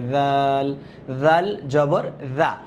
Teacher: জালটা বলার সময় জিহ্বাটা বের করে আমরা শিখেছিলাম অল্প একটু জিহ্বাটা বের করে